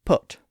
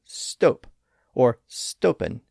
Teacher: That O sound is made by raising the back of the tongue a bit, and also by rounding the lips. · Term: rounded vowel sound